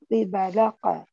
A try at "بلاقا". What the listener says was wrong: ہم اتنا قلقلہ نہیں کریں گے. It's not okay. A حروف قلقلہ. If قاف ساكن we not, read اق. No. Because قاف كسرة كي.